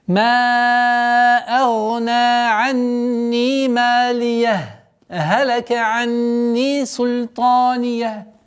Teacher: Мы останавливаемся, но без вдоха и выдоха. Это называется правило сакт, предпаузальная остановка.